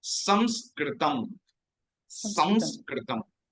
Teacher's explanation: there is an anuswara there above the sakara, and we pronounce it is a nasal sound. It's a nasal sound, and then we pronounce through nose and mouth.